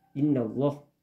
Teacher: itu dibaca dengan berdengun inna sampai 2 harakat ya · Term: gunnah